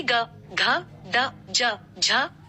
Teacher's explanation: व्यंजनों के उच्चारण में स्वर तंत्रियों में कंपन पैदा होती है उन्हें सघोष व्यंजन कहते हैं